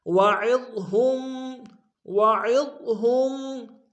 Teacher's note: عین کو ضاد کے سامنے لائیں گے، ضاد کو موٹا ادا کریں گے